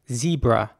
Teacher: So the E at the beginning would be pronounced once again like an E sound, a quite long E as well